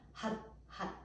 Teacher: that R sound is like that kind of D sound, or a Spanish R, like a rolling R. Had, had.